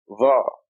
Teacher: This is Dha, you stick your tongue out, Dha, a heavy Z with sticking your tongue out